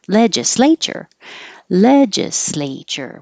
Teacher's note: slay is underlined because it's a secondary stress so it will get longer but not higher